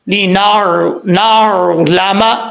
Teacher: نون کے بعد عین ہے، عین کو جھٹکے کے ساتھ نہیں پڑھنا، نارمل طریقے سے